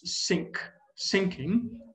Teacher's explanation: for him, the word thinking or think is pronounced as sink, sinking, right?